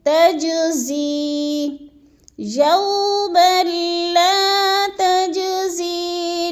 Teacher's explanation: یوم لا تجزی، زی یا کو مدہ ہے، ادھر یا ساکن سے پہلے زا کے نیچے زیر آ گیا ہے تو ادھر کیا ہو رہا ہے، یا مدہ۔ یا مدہ کو ایک سے دو الف کے برابر ہم نے کھینچ کر پڑھنا ہے